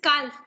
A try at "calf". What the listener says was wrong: Calf. No, calf. L is silent there. Calf. But L is silent, so we will pronounce it as calf. L is silent.